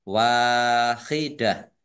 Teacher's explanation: tak marbutoh karena wakaf dibaca ha sukun